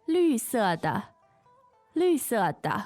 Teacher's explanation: so there you has green and it's fourth tone. 绿色 and both fourth tone.